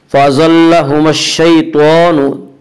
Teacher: تو کو پر پڑھیں گے، تو حروف مستعلیہ میں سے ہے۔ حروف مستعلیہ 7 ہیں جن کا مجموعہ خصہ ضغط نقض ہے، جو ہمیشہ ہر حال میں پر پڑے جاتے ہیں۔